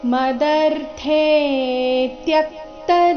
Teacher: ಮದರ್ಥೆ ಥೆ ದೀರ್ಘ ಬಂದು ಅದರ ನಂತರ ಅದರ ಮೇಲೆ ಆಘಾತ ಬರಬೇಕು